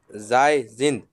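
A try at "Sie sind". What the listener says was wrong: SIE, Zai नहीं, Z pronounce करेंगे हम लोग. Okay, Z, ist, wir sind, ihr seid और Z, sind. ठीक है, तो जो Z का प्रोनाउंसिएशन है वो Z होना चाहिए, जाई नहीं।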